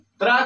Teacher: त्रा का उच्चारण स्थान दंत और मूर्धा है